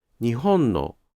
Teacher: In particular, due to emphasis or intonation changes, “nihon-no” may be pronounced as LHLL instead of LHHH.